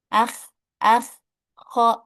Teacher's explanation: Tapi bedanya kalau huruf kho ada suara ngoroknya sedikit.